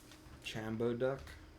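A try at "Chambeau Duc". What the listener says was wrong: the last one Shambo and it's like a sh sound instead of a CH sound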